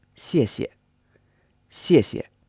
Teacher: And the first character is pronounced in a fourth tone, so the pitch goes from a high pitch down to a lower pitch, and the second syllable of 谢 谢 is not stressed